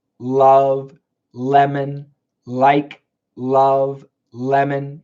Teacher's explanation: it sounds like L like love lemon like love lemon okay it's a very strong L sound and the teeth are slightly biting the tongue · it's a very strong L sound, and the teeth are slightly biting the tongue. Oh, and there's vibration coming from the throat.